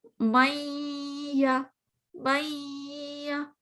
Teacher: یا کی آواز تو آپ کو آ رہی ہے، میہ، بٹ مجھے اس میں غنے کی آواز بھی تو آئی نا، میہ میہ. تو اس کا مطلب ہے کہ یا مجھے بالکل کلیئر، پھر صرف پورا پورا یا نہیں ادا سنائی دیا، مجھے اس کے اندر پیچھے والے لیٹر کی آواز بھی آ گئی. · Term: ناقص